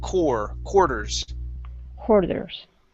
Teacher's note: it works okay so uh uh core instead of quar quarters saying quar we just say an o r sound